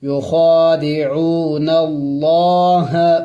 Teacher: لفظ اللہ سے پہلے زبر آیا ہوا ہے تو ہم نے لفظ اللہ کو موٹا پڑھیں گے